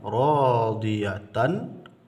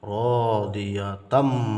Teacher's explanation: sempurna leburnya sempurna masuknya tanwin ini kepada huruf Mim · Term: idgham Kamil